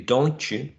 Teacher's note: Some people say don't you, with a voiceless affricate